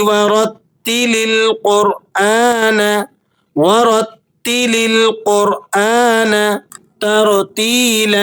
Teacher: را ساکنہ ہے، ما قبل مفتوح ہے، اس صورت میں بھی را کو آپ نے پر کر کے ادا کرنا ہے۔ ترتیلا یا مدہ ہے، یا ساکنہ ہے، ما قبل مکسور ہے، ایسی یا کو یا مدہ کہا جاتا ہے۔ · الف پر کھڑا زبر لگا ہوا ہے، اسے آپ نے 1-2 سیکنڈ کھینچ کر پڑھنا ہے